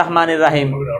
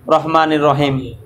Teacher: আকার উচ্চারণ হবে না র জবর র হবে রা হবে না